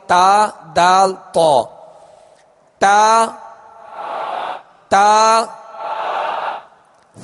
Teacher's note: زبان کی نوک اور اوپر کے دانتوں کی جڑ، اس سے 3 حروف ادا ہوتے ہیں، تا دال تو. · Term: مخرج